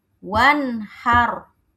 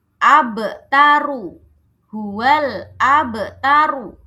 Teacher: Maka ro-nya ini harus dibaca tafhim atau tebal.